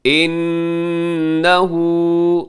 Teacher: نون مشدد پہ غنہ کیجیے گا